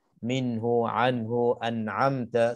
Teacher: Tak dengung, maka kita nak kena zahirkan, nak kena jelaskan nun mati ataupun tanwin itu. Dan bila sebutnya jelas, jaga supaya tak berlakunya qalqalah, tak berlakunya saktah. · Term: izhar halqi